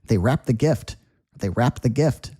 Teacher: You can almost hear that ed go away at the end of the word when you say it quickly